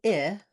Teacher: is a high front lax vowel. My tongue is a little bit lower than it is for the e of green tea.